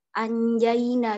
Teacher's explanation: ketika nun mati bertemu dengan jim, maka dibaca ny. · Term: ikhfa